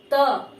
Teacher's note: जैसे आप लोग उच्चारण करके खुद से देख सकते हैं कि जब हम त का उच्चारण करें और हम सोचे कि मेरा जीभ जो है दांत में न सटे, ऐसा हो नहीं सकता है